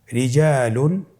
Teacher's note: রিজালুন, এখানে র হরফটি বারিক অথবা পাতলা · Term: র বারিক